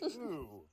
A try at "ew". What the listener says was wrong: Ew. Ew. No, not ooh. You're saying like with a W. Like, why are you saying it with a W? It's ew.